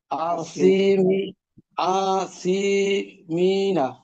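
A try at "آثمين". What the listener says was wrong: আপনার মাদ হবে হামজার উপর আর হইলো মিমের উপর আসিমিনা আসিমিনা এটা হবে দ্রুত উচ্চারণ হবে আসিমিনা আসিমিনা হ্যাঁ হ্যাঁ মিমের জেরের পরে আছে ইয়া জজম হ্যাঁ বা সুকুন এই জন্য এটা একটা মাদ হবে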